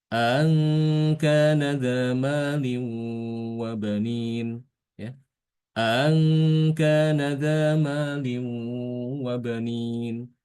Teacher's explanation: Kali ini justru dia itu malah mentasilkan hamzah yang kedua, ya. Jadi hamzah yang kedua itu ditasil bacanya. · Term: tashil